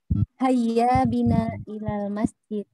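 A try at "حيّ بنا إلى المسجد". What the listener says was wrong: Ya.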